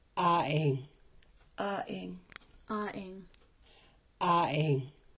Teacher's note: The letter A in Klallam is usually slightly longer than the other vowels. It is pronounced like the vowel in the English word call. It's in the Klallam word for house.